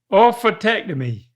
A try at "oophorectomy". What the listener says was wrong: There's only one T. You're saying two T's. You're saying tectomy. That's two T's, but the first T's not there. It's an R.